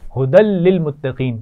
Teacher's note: دال پر تنوین ہے اور تنوین کو ملا رہے ہیں لام سے